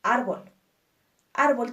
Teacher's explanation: es tónica ejemplo árbol árbol tiene dos sílabas ar b y nuestra sílaba tónica es ar por lo tanto la consideramos una palabra grave